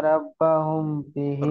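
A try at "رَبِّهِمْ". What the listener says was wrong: রব্বাহুম নেই, রব্বিহিম, বিহিম।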